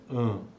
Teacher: quando é nasal e a produção desse som ocorre também utilizando a cavidade nasal